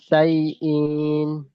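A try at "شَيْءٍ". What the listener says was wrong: ইন টান হয়ে যাচ্ছে, মিন শাইইন, মিন।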